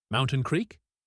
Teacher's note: Evening." Then he asked, "Mountain Creek?" He didn't say, "Are you going to Mountain Creek?" He just said the name of the destination with a rising intonation.